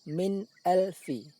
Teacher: Saat nun sukun berbunyi, seolah-olah berhenti sebentar. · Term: izhar halki